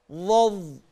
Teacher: كلمة ظهره في نفس الآية، افتح المصحف وبص كده وشوف ظا مفتوحة وها ساكنة، ظظ من طرف اللسان والها من الحلق